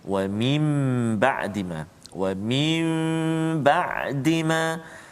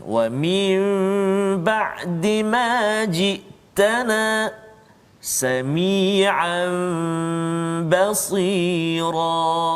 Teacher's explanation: Jadi bacaan dia tu ba tu tukar kepada mim, dengung dengan kadar dua harakat. Dua harakat saja. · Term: iqlab